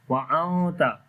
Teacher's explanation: After the mim sakin the next is waw, so we make izhar shafawi here. Wa anta, after the noon sakin the next letter is ta, we make ikhfa sound here.